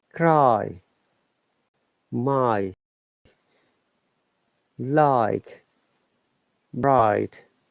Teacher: diphthong A and I together, it sounds like I, same as I, of human eye or any eye.